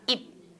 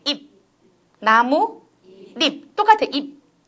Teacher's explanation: 파열음은 가, 까, 카처럼 공기를 내보내야 되는데 우리는 그 자리에서 공기 못 내보내는 언어예요